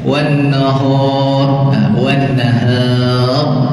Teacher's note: pada kalimah nahar ini hanya ra saja yang ditebalkan, yang lain jangan tebal. Kalau kita baca wakhtilafil laili wan nahar, bukan nahar, nahar, ra tu saja yang ditebalkan, jangan nahar.